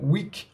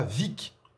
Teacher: Au même titre qu'on dit bien une fin de semaine, on l'appelle bien un week-end, comme le mot week en anglais, qui est donc un son qui part de la gorge, week. On ne dit pas vic, qui est un son qui part des lèvres